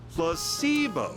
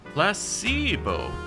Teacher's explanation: The stress is on the middle syllable.